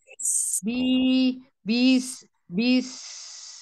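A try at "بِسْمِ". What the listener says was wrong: Jangan dimasukin ke dalam, bis. Ya, bis. Tapi keluar. Tertahan sama giginya, bis. Ya, jadi dia agak membengkok ya depan is gitu kan. Jadi kayak punggung agak ke belakang ya. Seperempat depan lidah itu kan naik, agak nekuk. Is gitu kan. Is. Permasalahannya adalah giginya jangan dirapetin. Nah, ini anak-anak ngomong sambil ngerapetin rahang ini.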